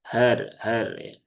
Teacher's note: ini huruf H di pangkal tenggorokan